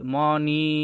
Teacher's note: নয়ের সাথে দীর্ঘ ইকার আছে, তো এখানে টান হবে